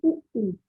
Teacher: आप मेरे साथ बोल के देखिए उ, तो उ में दोनों होठ का प्रयोग किया जा रहा है